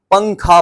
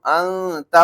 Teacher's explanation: نون کی آواز کو ناک میں چھپا کر نوک زبان نون ہی کے مخرج میں نہایت ضعیف کے ساتھ لگا کر ادا کریں، اخفا کی مقدار 1 الف ہے۔